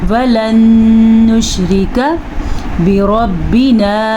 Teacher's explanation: نون ساکن کے بعد نون آ گیا ہے تو یہاں پہ بھی غنہ ہوگا اور نشریکہ میں را کو باریک پڑھنا ہے اور کاف کو زبر کے ساتھ چھوٹی سی زبر ہے اور اس کو لمبا نہیں کرنا, چھوٹی سی مقدار ہوتی ہے اس کی.